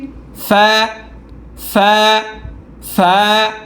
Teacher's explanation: উপরের দাঁতগুলো নিচের টোটের পেটের সাথে